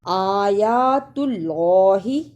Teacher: وَأَنْتُمْ آیات اللہ، اسے آیت اللہ ہی نہیں پڑھنا، دونوں کھڑی زبر کو ادا بھی کرنا ہے اور اللہ کو پر بھی پڑھنا ہے